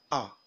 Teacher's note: It is a front, open, lax and unrounded vowel. The mouth is open but not as much as for A sound.